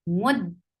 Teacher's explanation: you will circle your lips for meme, but you will keep your lips very straight when you will land on dal, because dal is with sukoon. If you'll keep your lips on a dhamma state on dal too, then it will give you give others the idea that dal has dhamma too.